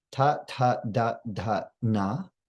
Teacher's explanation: So tip of the tongue goes up to the top of the mouth, ta, ta, da, da, na. And then the dental is voiced from the back of the teeth with the tip of the tongue. So it's softer than in English.